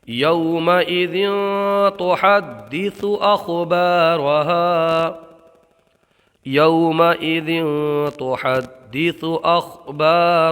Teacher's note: ہا کو برابر نکالیں گے، دال کو جماؤ کے ساتھ ادا کریں گے، اس لیے کہ دال حروف قلقلہ میں سے ہے، اور جب حروف قلقلہ مشدد ہوں تو ان میں قلقلہ خوب ظاہر ہوتا ہے۔